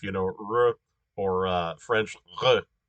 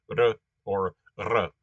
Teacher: what matters is that it's not a liquid R like English or French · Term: tap trill type R